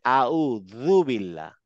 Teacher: জীবটা দাঁতের ঠিক মাথায় লাগিয়ে অনেকটা দালের মত উচ্চারণ করবো